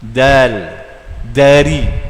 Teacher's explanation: makhraj dal ni di hujung lidah dekat dengan gisi.